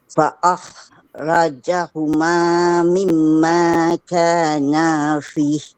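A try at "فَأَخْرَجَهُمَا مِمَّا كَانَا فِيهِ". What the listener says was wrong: Okey, panjang sikit. Sebab ada mat ni.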